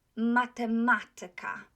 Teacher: So, matematyka. Tyka is not accented. The syllable before tyka is accented.